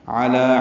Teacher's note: عین وسط حلق سے ادا کریں گے۔